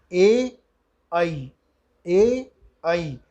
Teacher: ए और ऐ का कंठ और तालु दोनों से उच्चारण स्थान होते हैं। यानी ए ऐ, ए ऐ कंठ भी और तालु भी, इन दोनों के सहयोग से, दोनों के सामंजस्य से उच्चारण होता है। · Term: कंठ तालु